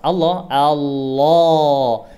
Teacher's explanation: ketika dia lafadz Allah Allah Allah dia lebih ke atas suaranya